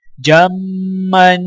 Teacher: بن، حبن، جیم میم زبر جم، میم دو زبر من، جمن، میم مشدد ہے تو میم پر غنہ کیا جائے گا